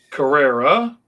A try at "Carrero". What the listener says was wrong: Carrero. A lot of people, weirdly enough, confuse it with an A, like Carrera, because you have to say with like a Hispanic kind of a thing.